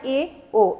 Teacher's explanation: अर्ध समृत में आप देखेंगे समृत की अपेक्षा थोड़ा ज्यादा मुंह खुलता है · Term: अर्ध संवृत